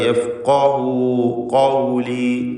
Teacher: തഫ്ഖീം ചെയ്യുക. യഫ്ഖഹു ഖൗലി തടിപ്പിച്ച് ഖാഫ് ഉച്ചരിക്കുക